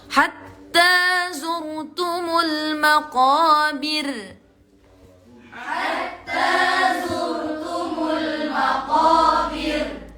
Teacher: Yang pertama tadi tebal. Yang al-maqabir ra-nya dibaca tipis. Meskipun di situ berharokat fathah. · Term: tarqiq